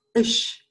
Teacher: the ch sound in German often becomes a sh. And that makes the sound of Luxembourgish really particular, really special and strange, because they have a lot of these sh sounds in it.